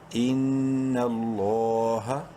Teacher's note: اوپر زبر لام کو بولڈ کریں گے اور کھڑی زبر کی وجہ سے لام کو ایک الف کے برابر لمبا کریں گے ، لام کھڑی زبر لا، ہا زبر ہا، ان اللہ، میم